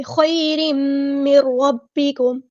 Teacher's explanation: نون ساکن کے بعد را ہے تو ہم یہاں پہ ادغام بلا غنہ کریں گے ، مر اس طرح، ٹھیک ہے، من ربکم نہیں پڑھیں گے،